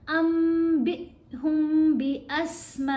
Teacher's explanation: با کو ہم نے حمزہ سے ملا کے پڑھنے، با تھوڑا سا جھٹکے سے پڑھا جائے گا